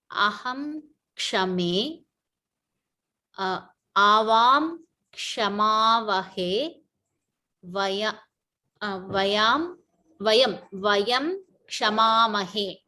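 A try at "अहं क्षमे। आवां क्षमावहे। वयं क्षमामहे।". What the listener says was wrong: Very good. Vayam kshamaamahe. Excellent.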